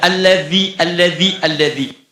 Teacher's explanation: kalau mengucapkan dzal itu sedikit digigitnya